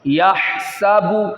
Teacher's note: یہ حا ہے، یہ حلق سے ادا ہوگا